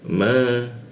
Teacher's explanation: masuk ke ma bibir bertemu bibir dipanjangkan Ma lalu ta ada huruf ta ya ee bocor halus menggunakan ujung lidah ditempelkan ke gigi dia.